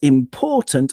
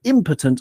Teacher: important, obviously the second syllable, impotent on the first syllable, we put the stress, and that actually influences the meaning.